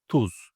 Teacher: The last and the only vowel is U, which is the back vowel and the rounded vowel.